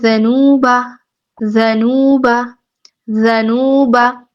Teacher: واو مدہ ہو رہا ہے. اس کو بھی ہم 2 حرکات لمبا کریں گے.